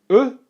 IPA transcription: uː